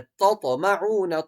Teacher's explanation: کے ساتھ جوڑنا ہے، تطمعون، طا پہ قلقلہ کیا جائے گا، جب طا پہ قلقلہ ہوگا تو طا اپنے آپ میں خود ڈیفائن ہو جائے گا کہ یہ حرف طا ہے نہ کہ تا